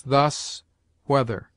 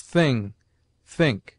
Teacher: TH has two sounds, the one soft as thus, weather, the other hard as thing, think.